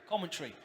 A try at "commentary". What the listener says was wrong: You're saying two words. You're saying common tree, like pine tree, oak tree, stuff like that. A common tree, a palm tree.